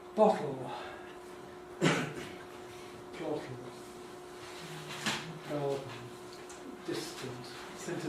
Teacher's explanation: these are examples of choices between syllabic l and the possibility of a vowel plus l